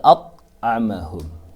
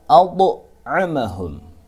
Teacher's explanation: Dha harus dipantulkan karena dha ini adalah huruf qalqalah. Tidak boleh membaca at'amahum, tapi harus dipantulkan menjadi ad'amahum. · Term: qalqalah sughra